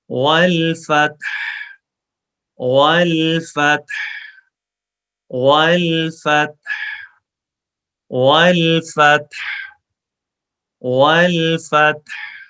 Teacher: والفتح، ہا بے شک ہا ساکن ہے، ہا پہ ہم رکیں گے، بٹ ہا کو ہم پڑھیں گے نا، تو ہا کی آواز نکالیں، کلیئر ساؤنڈ